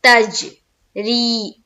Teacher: تج جیم میں قلقلہ ہوگا اس لیے کہ جیم کے اوپر جزم ہے اور جیم حروف قلقلہ میں سے ہے